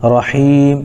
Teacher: یا ساکن سے پہلے ہا کے نیچے زیر ہے، اس لیے یا مدہ ہوگا، ان کو تھوڑا کھینچ کر پڑھیں گے۔ میم چونکہ آخر حرف ہے، یہاں پر وقف کرنے کی وجہ سے میم کو ساکن کر دیں گے، جیسے رحیم۔